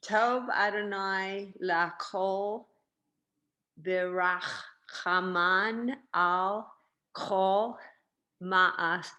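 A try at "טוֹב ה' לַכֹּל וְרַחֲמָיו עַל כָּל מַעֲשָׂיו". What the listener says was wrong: These are vavs. a vav. It's rachamav and it's ma'asav. This is actually like a comma because you go tov Adonai lachol and you kind of stop and then you do v'rachamav al kol ma'asav.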